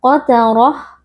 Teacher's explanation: ra huruf tebal karena ra di sini berharakat fathah jadi kita baca dengan mengangkat pangkal lidah